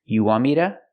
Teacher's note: We hear to pronounced like duh. Because the T is between vowels, the T changes to a fast D.